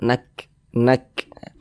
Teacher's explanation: cara mengucapkannya nakah ada seperti percikan